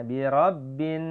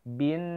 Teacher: Birabbin bin ada gunnah di situ. Jangan binas tapi bin, hitung pakai tangan 2 harokat ya.